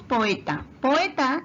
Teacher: encontramos dos vocales abiertas como son abiertas estas se separan y van a formar sílabas diferentes por eso la palabra poeta tiene tres sílabas lo mismo pasa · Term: hiato